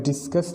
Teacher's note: डिस हमारा unstress syllable है एंड कस हमारा स्ट्रेस सिलेबल है